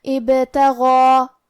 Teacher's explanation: حرف الغین کے بعد کھڑا زبر ہے تو یہاں مد الف ہے، اور کیونکہ مد الف اپنے پیچھے والے حرف کا حکم لیتا ہے تفخیم میں اور ترقیق میں، تو ہم غین کو اور مد الف کو دونوں کو بھاری آواز میں ادا کریں گے